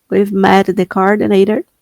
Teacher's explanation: o seu T parece um R. Tem, ele tem esse som mesmo. American English